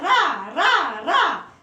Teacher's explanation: प्रकंपित या कंपन जात हम इसलिए कहते हैं रा को कि आप जैसे बोलेंगे रा रा रा, तो हमारी जीभ में कंपन होगा, हमारी जीभ कांपेगी। जब तक हमारी जीभ में कंपन नहीं होगा तब तक हम रा का उच्चारण नहीं कर सकते हैं।